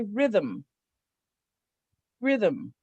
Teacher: It actually has two syllables, but there's no vowel sound in there because the M is sonorous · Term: syllabic consonant